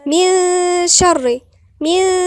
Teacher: من شر يعني النون دي كأننا ما منطقهاش خالص، لساني كده جاي في النص كده ورايح عند حرف الشين. من شر، من، وغنة ايه مرققة مش مفخمة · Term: غنة مرققة